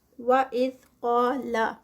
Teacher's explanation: قاف پہ جو ہے یہ قاف ہیوی ہے اور ساتھ میں 2 کاؤنٹس کا اسٹریچ